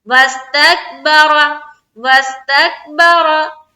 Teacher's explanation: रा को पुर रखना है, रा के ऊपर जबर है